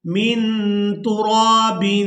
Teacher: نون کی آواز کو ناک میں چھپا کر ادا کریں گے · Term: اخفا